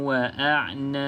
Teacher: pastikan ada lantunan sebab kita berhenti pada huruf ba. Ba ni qalqalah.